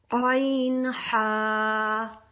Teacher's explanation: عین ہا یہ درمیانی حلق سے ادا ہوتے ہیں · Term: حروف حلقی